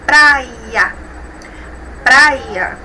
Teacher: Nós temos aí uma vogal e uma semivogal na última sílaba. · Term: ditongo